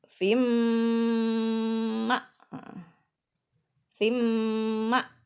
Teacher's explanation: Ini idgham bi gunnah. Dimasukkan cara bacanya. Fim didengungkan. Masuk terus didengungkan.